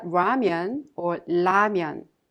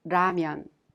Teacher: isn't an exact match to the lear sound in english but you can consider it a sound in between the l sound and the r sound